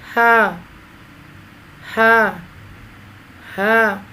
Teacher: دو حرفی آواز ہے اس کی اور تھوڑا سا کھینچ کر ادا ہوگی۔ زبان کی جڑ کو حلق کی طرف دبائے بغیر، باریک اور بغیر رگڑ کھاتی ہوئی سانس میں ہم اس کو ادا کریں گے۔ ہا، ہا، ہا، سینے کی جانب سے ادا ہوتا ہے۔